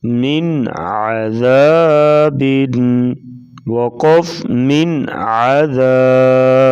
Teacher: نون ساکن کو ادا کر کے فوراً بعد والے حرف کو ادا کریں گے، درمیان میں دیر نہیں لگائیں گے۔ دیر لگائیں گے تو اخفا ہو جائے گا، یعنی غنہ ہو جائے گا۔ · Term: اظہار